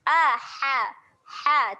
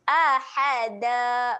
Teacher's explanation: makhraj huruf ha kena tekan di tengah kerongkong. Ha, tekan sikit kat tengah kerongkong ahada.